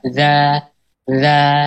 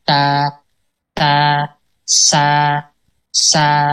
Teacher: adanya ruangan yang terbuka antara lidah dengan langit-langit sehingga udara atau suara mengalir di tengahnya saat pengucapan huruf-hurufnya. Jadi dia terbuka. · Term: infita